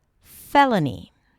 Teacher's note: you start with fe, that's the primary stress, an F sound and the e as in red. Then l, an L and a schwa, fella, and then ni, felony, felony.